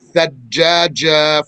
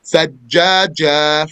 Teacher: Not thajjaja from the front of the tongue. Thajjaja from the middle of the tongue.